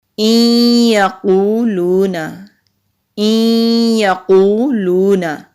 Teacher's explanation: کبرت کلمۃ تخرج من افواہہم ان یقولون، ان یقولون، حمزہ کے نیچے زیر ہے، نون ساکن کے بعد یا آ رہا ہے تو یہاں نون ساکن کے بعد یا آ رہا ہے تو اس کا مطلب ہے کہ یہاں پر ہم ادغام کریں گے غنہ کے ساتھ، یعنی کہ ملائیں گے بھی اور غنہ بھی کریں گے۔ یا کے اوپر کیونکہ تشدید ہے تو اس لیے نون ساکن کی آواز کو ہم یا اور حمزہ میں مدغم کر دیں گے، یعنی کہ جذب کر دیں گے، اور نون کی آواز کلیئر نہیں آئے گی۔